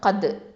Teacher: காஃப் வந்து நமக்கு தெரியும் அக்கசல் லிசான், அதாவது அடி நாவு எழுத்து